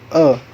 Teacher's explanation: Posisi depan belakang lidah tengah. Posisi tinggi rendah lidah sedang. Kebundaran bentuk bibir tidak bundar. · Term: Vokal E